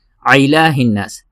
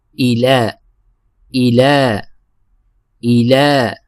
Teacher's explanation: تو عین کی آواز نہیں نکالنی بلکہ حمزہ کی آواز نکالیں گے